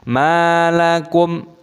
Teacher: mim sukun bertemu dengan lam alif dibaca idzhar syafawi dibaca jelas tidak boleh didengungkan dan lam alifnya panjang dua ketukan